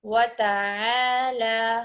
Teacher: عین حلق کے درمیان سے ادا کریے